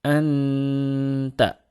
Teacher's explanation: Huruf ghunnah dan ikhfa dibaca tipis ketika bertemu dengan huruf ta